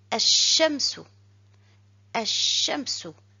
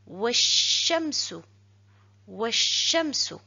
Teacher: Pour la lecture, on ne doit pas prononcer le lam. Et je lis directement ash-shamsu, ash-shamsu, le soleil.